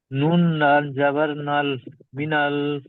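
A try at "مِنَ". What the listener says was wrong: মিনাল বলবেন না মিনাল বলে টানবেন না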